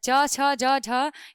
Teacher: च छ ज झ इसका जो उच्चारण स्थान है वो क्या है तालू